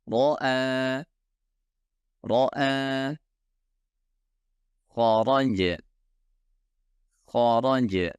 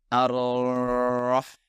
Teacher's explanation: Setiap ro membutuhkan satu getaran yang dapat terdengar